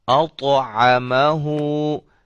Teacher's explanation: طا ہے حروف قلقلہ میں سے، اس کو ہم ہلا کے پڑھیں گے